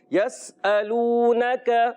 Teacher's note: یا زبر آنے کی وجہ سے بغیر کھینچے ادا کریں گے، سین کو باریک پڑھیں گے